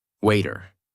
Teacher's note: In these words, the mouth does not stop strongly on the tea. The tongue touches quickly and moves on. That is why it sounds softer.